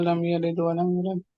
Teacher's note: دال جو ہے اس کے اوپر سکون ہے، اس کے اوپر قلقلہ کبرا ہوگا